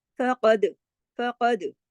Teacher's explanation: फा बारीक, कॉफ मोटा, क्योंकि कॉफ मोटे हरूफ में से है और दाल जो है इस जज़म के साथ है, तो इस पे हमने कलकला किया।